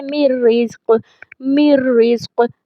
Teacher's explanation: اب دیکھیں رو کے اوپر تشدید ہے، نون ساکن تھا، میم کو میں نے رو کے ساتھ ملایا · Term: ادغام بغیر الغنہ